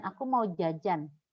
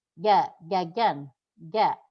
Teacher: Ja-nya Indonesia itu bukan dari wasatul lisan, tapi dari taraful lisan, ya, agak turun ke bawah.